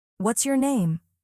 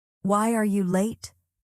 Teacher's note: But for WH questions, your tone falls. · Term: Falling